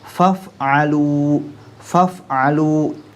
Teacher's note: Ini apalagi ketemu dengan fa sukun juga, sehingga sifat hamzahnya benar-benar terasa nampak.